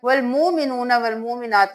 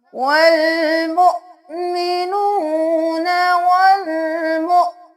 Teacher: یہاں پہ واو کے اوپر نہیں حمزہ کے اوپر جزم ہے تو ہم جھٹکا دیں گے، میم پیش حمزہ مؤ، والمؤمنون والمؤمنات۔